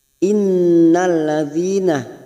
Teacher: nun yang bertasdid gunnah musaddadah kita tekan selama 3 harokat